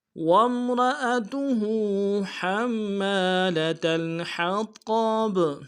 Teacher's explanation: حا کو گہرائی سے ادا کرنا ہے، طا کو بھی اور با کو بھی